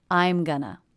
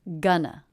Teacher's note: The first syllable has the G consonant, as in butter vowel, a nice clean N, and the second syllable the schwa. The first syllable is stressed, gun, and the second syllable unstressed, Gonna.